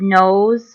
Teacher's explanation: the word nose almost has like a Z sound